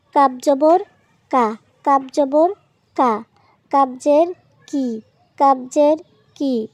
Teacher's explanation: কাপ জিহ্বার গোড়া থেকে একটু আগে বাড়িয়ে তার বরাবর উপরে তালুর সঙ্গে লাগিয়ে আমরা কাপ উচ্চারণ করব। ঠিক কপ যেই জায়গা থেকে উচ্চারণ করেছিলাম তার থেকে একটু সামনে থেকে কাপ উচ্চারণ হবে